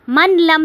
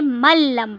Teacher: نون ساکن کو ہم بیچ میں سے سکپ کر دیں گے، من لم نہیں پڑھیں گے، ملم پڑھیں گے، میم زبر لام، مل لام زبر میم، لم، ملم۔